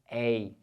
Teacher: Olha o ditongo aberto ei.